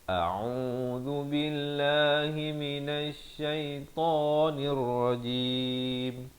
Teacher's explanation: Dipangkal kerongkong, Ain di pertengahan kerongkong, Zal di hujung lidah. Lafaz jalalah dibaca nipis 2 harakat.